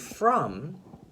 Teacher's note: the only tricky part is the Oh part because oh uh it almost sounds like a u sound instead of an O sound so that's the only tricky part in the word look at